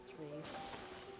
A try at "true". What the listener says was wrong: It almost sounded like you said tree instead of true.